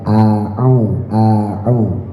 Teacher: ainnya tekan, a yang pertama hamzah, au yang kedua ain. A'u dilatih-latih ya, kalau lagi ta'awud ya jangan dibiasain pakai hamzah dua-duanya, dilatih ditekan.